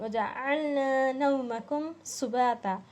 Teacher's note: کم میں بھی اظہار کر رہے ہیں. میم ساکن کے بعد سین آیا ہے